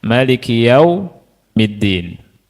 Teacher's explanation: Huruf mim dibaca pendek. Maliki yaumiddin.